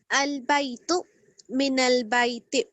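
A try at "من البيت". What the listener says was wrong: آپ آخر میں جھٹکا نہ دیں, البیتو اور من البیتی.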